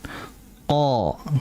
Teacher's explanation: huruf qaf yang hanya bersifat isti'la cukup pangkal lidah naik. Setelah huruf itu dibaca sesuai harokat fathahnya, ya sudah, lidahnya pangkalnya langsung turun.